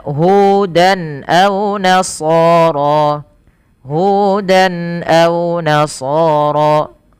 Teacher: pada lafal hudan ini harus jelas suara tanwinnya tanpa ada penahanan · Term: izhar halqi